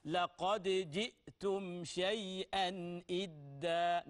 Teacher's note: هنا اظهار حلقي للتنوين